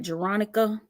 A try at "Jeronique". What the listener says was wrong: Jeronique. Ain't no Veronica in that, sis. What in the hell is you reading? Jeronique. Ain't no Veronica in there.